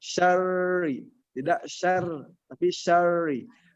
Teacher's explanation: huruf ro itu adalah ujung lidah bertemu dengan langit-langit atas, agak ke dalam · Maka sembunyikanlah takrir huruf ro tersebut apabila tasdid. Jadi pengucapan ketika kita talaki min syarri tipis, syar tebal, ri-nya tipis.